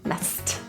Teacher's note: The S-S-E-D is pronounced as st, S-T, messed.